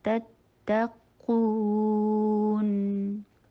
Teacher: شدت کے ساتھ ادا کیجیے اور قو کا مدہ کرتے ہوئے نون کی ساؤنڈ نہ آئے. مد کبھی بھی ناک میں نہیں جاتا